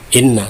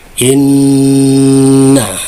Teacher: Artinya ini harus ditahan dulu dengan dengung ya, kurang lebih sekitar 2 sampai 3 harokat. Jadi ketika dibaca terasa ada getaran ke hidung ya. Jadi jangan inna tapi inna. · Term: nun gunnah